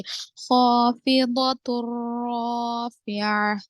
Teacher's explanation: खौ को और अलीफ को दोनों को मोटा पढ़ेंगे। खाफिदतुर राफ़िआ, रा को तो मोटा पढ़ेंगे क्योंकि रा पर जबर है, तो अलिफ मद्दा भी हो रहा आगे से, खाफिदतुर राफ़िआ।